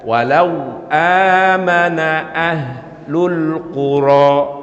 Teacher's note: amana bacanya cukup dengan 2 harakat atau 1 alif saja. Ini namanya sekali lagi mad badal, yaitu huruf mad menggantikan hamzah yang kemudian dihilangkan dan diganti dengan bacaan panjang.